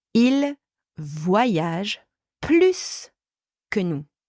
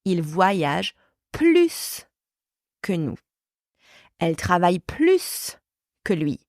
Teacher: when plus is used in comparisons involving verbs, the S is pronounced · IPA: [plys]